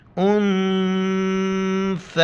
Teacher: اور ثا کے وقت زبان باہر نکالیں گے